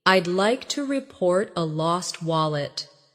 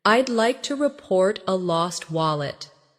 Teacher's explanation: Stress lost wallet so it's clear